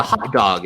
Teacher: the short a sound in hot and the short a sound in dog that is completely the same in American English. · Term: short ah sound